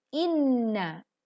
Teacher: dengungkan teman-teman, ditahan kurang lebih 3 ketukan karena bacaan dengung pada huruf nun bertasydid